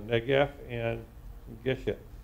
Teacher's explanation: you put the emphasis on the first syllable instead of the last syllable